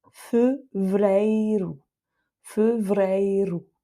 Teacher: le dernier E, lui, est tonique, il va avec ei, et donc c'est un E ouvert. Donc ce mot-là, ça donne fevereiro, fevereiro.